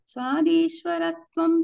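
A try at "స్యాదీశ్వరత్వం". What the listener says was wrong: స్యాత్. స్వాద్ కాదు, స్యాత్.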